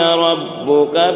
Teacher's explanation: ربک میں جو را ہے وہ را بھی پور ہوگی، را میں زبر ہے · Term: را پور